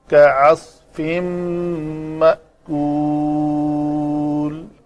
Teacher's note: فجعلہم کعصف مأکول، تنوین کے بعد میم ہے تو یہاں پہ ادغام ہوگا، تو آگے حمزہ ساکن ہے تو جھٹکے سے پڑھیں گے